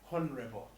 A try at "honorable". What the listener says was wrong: No, honorable. The H is not pronounced. It's honorable.